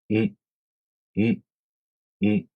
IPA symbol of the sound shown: m